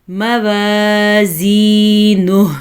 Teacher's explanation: یا کو کھینچ کے پڑھنا ہے کیونکہ یا ساکن ہے اور اس سے پہلے زیر ہے تو یہ یا مدہ ہے